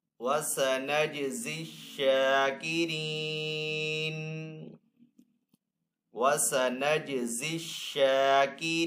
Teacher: شین کے اوپر یہاں پہ کھڑا زبر ہے تو شین کو ایک الف دو حرکات کے برابر کھینچ کر ادا کریں گے · آگے یہاں پہ وف تام کی علامت ہے، وف کرنے کی صورت میں نون کو یہاں پہ ساکن کریں گے